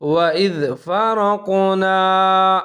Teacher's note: وَإِذْ فرقنا، فا کے اوپر زبر ہے، را کو موٹا کر کے پڑھنا ہے کیونکہ اس کے اوپر زبر ہے، قاف کے اوپر ساکن ہے، قاف کو بھی موٹا کر کے پڑھنا ہے، قلقلہ کرنا ہے، نون زبر الف نا۔